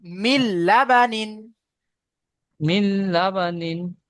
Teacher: বিনা গুণায় জাহির করে তাড়াতাড়ি পড়তে হবে। · নুন সাকিনকে লামের সাথে মিলিয়ে তাড়াতাড়ি পড়তে হবে। বিনা গুণনায় বিনা জাহির করে তাড়াতাড়ি গুণায় পড়তে হবে। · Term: ঈদগামে বেলাগুন্না